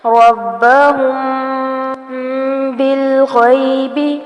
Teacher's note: اخفاء شفوی ہو رہا ہے میم ساکن کے بعد با